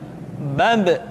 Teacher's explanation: Ketika mati, maka terdengar suara pantulan.